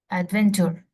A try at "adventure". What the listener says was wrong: But it's not adventure. It's not T, it's ch. Adventure.